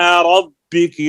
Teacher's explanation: रा के ऊपर जबर है, पुर होगी